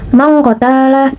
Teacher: Hukum tajwidnya yaitu ikfa, karena terdapat nun mati bertemu dengan huruf qaf atau huruf ikfa dan bacanya berubah menjadi ang seperti ini.